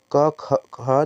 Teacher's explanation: क और ख दोनों कंठ से बोले जाते हैं और दोनों का जो प्रयत्न है वह भी स्पष्ट प्रयत्न है